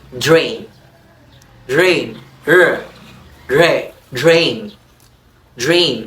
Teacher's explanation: we have the D post-alveolar before R